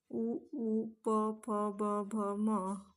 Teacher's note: उ प फ ब भ म यांचा उच्चार करत असतानी ओटाचा स्पर्श होत होतो. स्पर्श ओठाचा होत असल्यामुळे यांना ओष्ठ असे म्हणतात. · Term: ओष्ठ्य